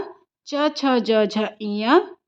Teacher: च से लेके य तक का उच्चारण स्थान तालू से